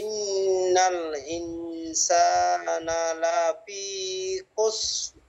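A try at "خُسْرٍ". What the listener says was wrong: এখনো র আসে নাই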